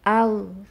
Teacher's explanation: huruf ghain bukan huruf qalqalah. Jadi jangan dipantulkan suaranya.